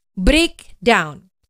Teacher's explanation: Hanya pengucapannya saja ada stres pengucapan di suku kata pertama ya.